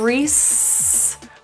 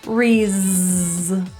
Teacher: So instead of res, we're going to add our voice, res.